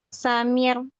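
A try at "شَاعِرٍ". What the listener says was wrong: Iya, tebal itu bener. Iya, itu tebal ya. Jadi dilatih, tipiskan.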